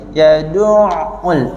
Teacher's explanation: Huruf ain ni dia bukan syiddah, bukan rahwa, dia tengah-tengah. Jadi kena kita okey contoh kalau bunyi putus kita bunyi yaduk.